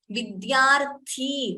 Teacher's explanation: vidya d alpa prana d and ya vidyarthi thi is mahaprana